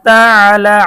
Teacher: আইনে যখন আইন আসবে একটু চাপ দিয়ে পড়তে হবে গলাটা।